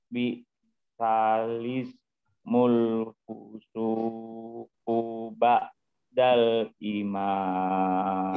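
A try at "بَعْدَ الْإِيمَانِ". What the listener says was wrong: I-nya panjang. Iman. Tinggal ketelitiannya tentang dengungnya ya Pak. Jadi agak kalau dengung agak lama.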